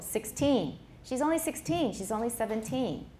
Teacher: if it's the predicate then it's going to be on the second syllable